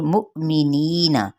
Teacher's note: नी पे मद्दे इसलिए बिल या का कायदा, एक अलिफ या दो हरकत के बराबर खींचेंगे। नून की हरकत को लंबा नहीं करेंगे।